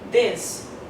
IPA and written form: ðɪs (this)